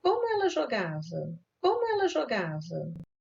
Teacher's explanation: They begin with high pitch on the WH word with gradual fall over the following syllables until the last stressed syllable with a low fall nuclear contour.